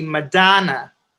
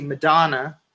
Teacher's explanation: people from detroit say madonna with the a open